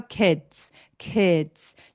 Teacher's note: D가 있을 때에는 디귿 받침이 있는 것처럼 소리 내고 어 마지막에 ts가 있는 것처럼